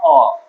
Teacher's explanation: প্রত্যেকটা অ থেকে যতগুলো আমার স্বরবর্ণ রয়েছে সেগুলো উচ্চারণ করতে গিয়ে আমাদের কোন রকম ভাবে কোনো বাধা না পেয়েই উচ্চারণ করতে পারি। যেমন অ উচ্চারণ করতে মুখটা খুলতে হয়, কারো কোনো বাধা আমরা পাই না। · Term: স্বরধ্বনি